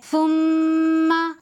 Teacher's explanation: ثم یہاں بھی حرف غنہ کا قاعدہ ہے، اس لیے کہ میم پر تشدید ہے تو یہاں بھی ایک الف کے برابر غنہ کر کے پڑھیں گے